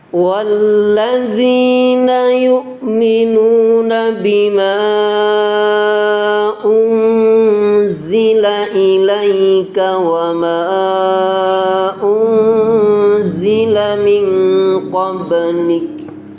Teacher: Kemudian lafaz ma bimaun ini dibaca panjang ya, 6 harokat. Bima unzila itu namanya bacaan mad jaiz munfasil, karena mad bertemu hamzah beda kalimat ya.